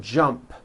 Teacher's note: the final sound in jump is a p which is unvoiced